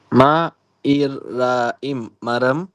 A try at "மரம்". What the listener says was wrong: மா ரா, இது ரா.